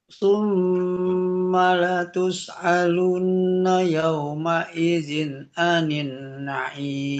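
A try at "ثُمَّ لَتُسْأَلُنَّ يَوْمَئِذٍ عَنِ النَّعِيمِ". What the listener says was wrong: Anin naim. Tahan lagi di sini dengungnya yang warna pink.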